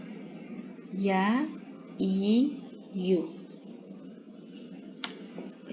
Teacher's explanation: тілдің ортасынан таңдайға жақындатылуы арқылы шығады. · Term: я әрпі